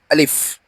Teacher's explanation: আলিফে কোনো টান হবে না, একবারে দ্রুত উচ্চারণ করতে হবে।